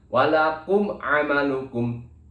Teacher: Yang terdapat di sini adalah huruf ain, maka dibacanya jelas. Maksudnya jelas adalah jelas mimnya, ya, bukan didengungkan apalagi dileburkan. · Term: idhar syafawi